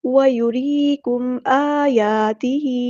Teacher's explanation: وَيُرِيكُمْ آيَاتِهِ، را کی جو یہاں پر ہے، ہم نے اس کو پور نہیں پڑھنا، باریک پڑھنا ہے کیونکہ را پہ زیر ہے